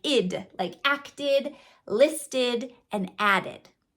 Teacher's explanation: And then, of course, if you have actually the letter T or the letter D before the ED is going to represent the id sound. It's a schwa with a D, more like id